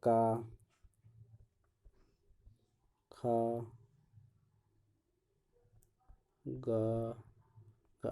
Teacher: का वर्ग का जैसे उच्चारण होता है तो ये कंठ से बोला जाता है